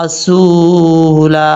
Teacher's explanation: سین کے بعد جو واو ہے اس واو کو سین کے ساتھ ملائیں گے، مدہ پڑھا جائے گا، اور جب وقف کریں گے تو الف پڑھا جائے گا.